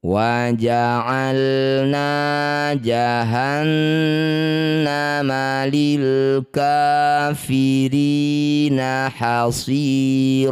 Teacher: Setiap ada nun atau mim yang bertasydid disebut bacaan namanya gunah musyaddadah. Bunyi nun didengungkan dua harakat.